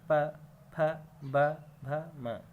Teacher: आप जब उच्चारण करेंगे तो देखेंगे ये ओठ से बोले जा रहे हैं, ओठ का स्पर्श हो रहा है। बिना ओठ के ये वर्ण नहीं बोले जाते हैं। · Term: ओष्ठ